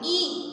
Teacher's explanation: तो देखिए अब हमारी जो जबान है ई बोलने पर दांतों के पीछे सट जाती है, इसलिए वो है अगला कोना जो टकरा रहा है तो वो होगा अग्रस्वर।